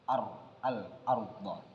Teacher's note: Di mana ra tafkhim ini berarti tebal dan ra tarkik berarti tipis. Dalam kalimat al-arda ini bacaannya ialah kalimat ra dibaca tebal, berarti termasuk kalimat ra yang tafkhim.